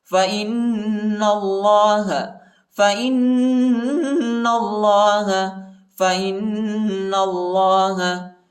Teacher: نون پر شد آیا ہے اور نون کو لام کے ساتھ ملائیں گے اور اللہ کے نام کو موٹا پڑھیں گے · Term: غنہ